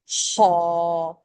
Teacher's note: خا پڑھتے ہوئے خراٹے کی آواز ہوتی ہے، اور خا ایک فرکشن کے ساتھ آتا ہے، موٹائی لے کے آتا ہے، منہ بھر کے پڑھنا پڑتا ہے، خا۔